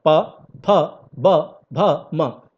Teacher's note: सब आपका लिप्स से यानी कि होठों से स्पर्श करते हुए इसका उच्चारण होता है। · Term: प वर्ग